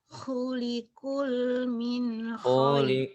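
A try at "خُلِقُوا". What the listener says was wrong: khuliqu jangan khuliqul. Khuli khuliqu khu ya.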